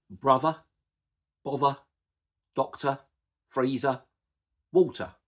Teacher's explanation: we use what's called a non-rhotic R. Now, the words brother, bother, doctor, freezer, water, I don't pronounce the R at the end of those words.